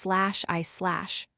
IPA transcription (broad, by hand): eɪ